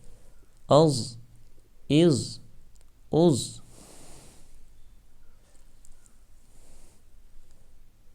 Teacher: ضاد بھی حروف مستعلیہ میں سے ہے اس لیے اس کو بھی موٹا پڑھیں گے